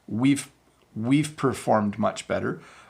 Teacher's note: So you just have to listen for that very soft V sound.